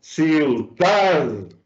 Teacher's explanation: Mayor intensidad. Aquí estoy aplicando más fuerza o más pronunciación, intensidad a la sílaba dad. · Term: acento prosódico